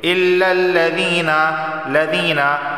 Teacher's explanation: या साकिन से पहले ज़ेर है तो एक अलिफ के बराबर इसे खींच कर पढ़ा है